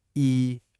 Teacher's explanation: It's a high flat tone.